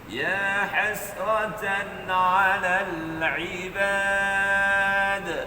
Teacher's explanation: Kalau tak ada tu, dia jadi huruf ta. Kalau tuan-tuan baca huruf dal tanpa qalqalah, dia jadi ta.